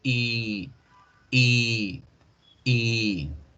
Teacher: La I larga igual vamos a mantener la boca neutral, pero en vez de decirla corta como le estamos haciendo la otra, vamos a alargarla, vamos a decirla como 3 veces.